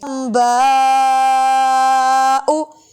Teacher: میم کی آواز آئے گی، نون کی نہیں آئے گی